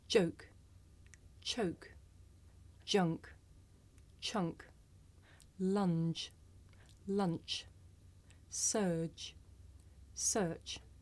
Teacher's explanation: you may find it difficult to hear the difference between the voiced sound that you hear at the beginning of the word joke and it's voiceless partner that you hear at the beginning of the word choke listen